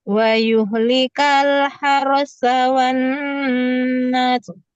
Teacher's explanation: Nggak boleh dipanjangkan nasnya ya.